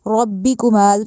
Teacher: ربکما ایک تو را کو موٹا کرنا ہے، دوسرا میم کو لمبا کرنا ہے